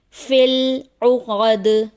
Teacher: حالت وقف میں دال کی آواز پلٹ کر واپس آئے گی، جیسے فی العقد. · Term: حرف قلقلہ